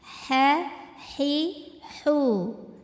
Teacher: ke H ini dari tenggorokan bagian tengah. Bunyinya halus, kayak nggak ada kotoran sama sekali.